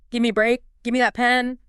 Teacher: The vowel sound in give might weaken a bit. The v sound sort of merges into the m.